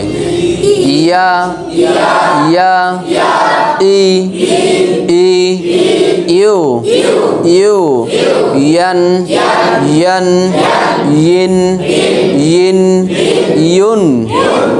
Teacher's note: জিহ্বার মাঝখান থেকে নরম ভাবে · ইয়া অক্ষর জিহ্বার মধ্য হতে নরম করে পড়তে হয়